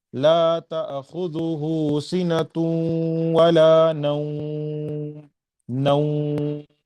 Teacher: میم پر رک رہا ہوں، اس وجہ سے میں 4 حرکات کے برابر مد لین کو کھینچ رہا ہوں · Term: مد لین عارض